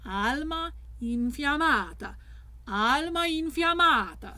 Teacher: we have two stressed with unstressed clustering of vowels in the middle